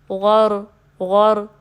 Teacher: اسی طرح را میں جب آپ را کے مخرج پہ ٹچ کرتے ہیں تو را میں بھی تکرار سی پائی جاتی ہے، تھوڑی سی ریپیٹنگ ہوتی ہے، تو وہ بھی آنی چاہیے، زیادہ نہیں آنی چاہیے، تھوڑی سی ہوگی، غور غور۔